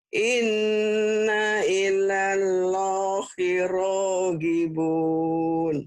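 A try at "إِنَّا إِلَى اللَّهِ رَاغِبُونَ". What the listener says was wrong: Inna ilallah. Kenapa jadi ilah? Ini ada kemungkinan mungkin lidah ibu agak pendek Bu ya, nggak sampai mungkin. Atau mungkin lewat daerah ibu ya. Harusnya kan inna ilallah.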